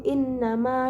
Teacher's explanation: Pada ayat ke-11, pada kalimat innama terdapat hukum bacaan matobi'i karena terdapat huruf mim berharokat fathah bertemu alif, dibaca panjang sebanyak 2 harokat